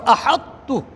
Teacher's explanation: وہ ادغام ایسا نہیں ہوا کہ جس کے اندر اس کی دونوں کی آواز مرج ہو جاتی، کوئی صفت باقی نہ رہتی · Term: ادغام ناقص